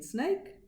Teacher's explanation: s is a voiceless sound it doesn't use the vocal folds